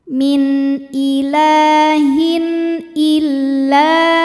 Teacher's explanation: ada tanwin kasrah menghadapi huruf halq atau huruf tenggorokan yaitu Hamzah maka tanwin kita bunyikan dengan n jelas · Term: izhar halqi